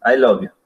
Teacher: Como sin ganas, la voz no ni sube ni baja, I love you. Bueno, ahora a este mismo I love you le vamos a dar un falling tone. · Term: neutral